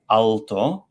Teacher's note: this velarized L sound, ol, often in many languages becomes a w sound